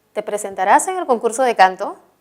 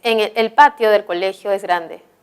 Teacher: Y la siguiente es, en el patio del colegio es grande, que está informando algo, por lo tanto es descendente. La primera es ascendente y la siguiente es con un tono descendente.